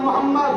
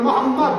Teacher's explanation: খেয়াল করতে কোন নবীর নাম নিলে দুই ঠোঁটে ঠোঁট ঠেকছে